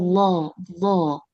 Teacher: ujung lidahnya dia menempel ke bagian gusi kan dia memanjang makhraj sampai ke makhraj huruf lam